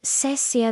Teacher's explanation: The tone goes down. It's like a quick sharp thank you.